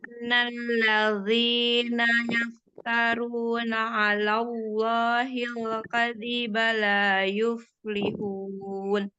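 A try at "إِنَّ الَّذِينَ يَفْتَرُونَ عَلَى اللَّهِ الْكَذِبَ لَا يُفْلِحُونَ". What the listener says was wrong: Ya, kalau disambung masih kegesek huruf zotnya itu, Mi ya.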